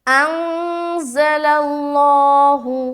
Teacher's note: تو یہاں پر ہم کھینچ رہے بیما انزل اللہ، یہاں پر پھر اخفا کریں گے، یہاں تو مد کر دیا جو کہ ہے مد منفصل، اس کے بعد ان میں اخفا کر رہے، پھر زل اللہ، زا کو جل پڑے، لام کو بھی لام سے ملاتے ہوئے پڑھیں گے، لیکن لفظ اللہ یہاں پر جب آ گیا اور یہاں پر زبر ہے تو اس کو پر کریں گے